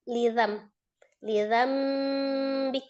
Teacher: Nah, tanwin bertemu dengan ba maka dia iqlab hukumnya ya. Jadi bukan cuma dirubah menjadi huruf mim saja nun sukunnya itu, tapi harus disertai dengan ghunahnya. Lidzan menjadi lidam lidambik ya gitu ya.